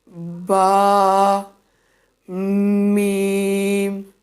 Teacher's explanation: پہلا دونوں ہونٹوں کے تر حصہ سے اور دوسرا خشک حصے سے ادا ہونے والے حروف